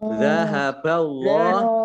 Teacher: Allahnya dibaca tebal karena depannya fathah.